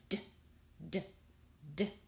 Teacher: the tip of your tongue will touch behind your upper front teeth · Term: D sound